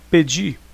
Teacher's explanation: o di é a sílaba tônica Ou seja a última sílaba da palavra